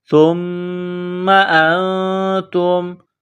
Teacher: سا کو پڑھتے وقت زبان باہر نکالیں گے، سا کو نرم کریں گے، سا کو میم کے ساتھ ملائیں گے، میم اور نون مشدد جہاں بھی آ جائے تو آواز ناک میں چھپائیں گے، غنہ کریں گے۔